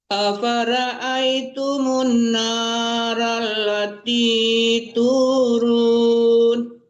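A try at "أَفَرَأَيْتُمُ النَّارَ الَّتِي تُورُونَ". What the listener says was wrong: Ya, ro-nya ditebalkan ya Bu. Kalau ra itu tipis.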